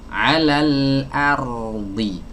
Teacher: Malah ditebalkan. Harusnya hamzah dibaca tipis, ro dibaca tebal. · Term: takhlisul huruf